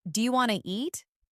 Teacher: Sometimes letters are dropped, like the T in want to, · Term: connected speech